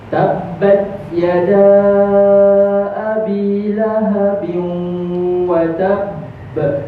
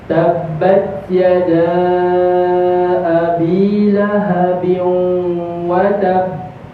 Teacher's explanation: Cara dia kita tahan huruf tu, tahan huruf ba, lepas tu baru lepas. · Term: paling besar